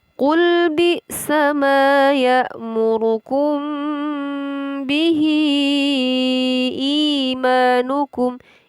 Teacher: Bihi terdapat hukum bacaan mad jaiz munfasil yang panjangnya sampai 5 harokat atau 5 ketukan.